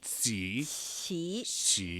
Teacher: You put the middle part of your tongue against the ceiling of your mouth.